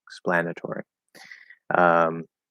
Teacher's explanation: we can't really reduce it to er it has to stay or